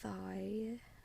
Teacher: It's called a blend, a vowel blend. So it's a blend of ah and I, because we say thyroid